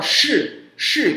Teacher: A gente tem que se preparar, tem que ser o tom, tem que ser shi, quarto tom, não pode ser si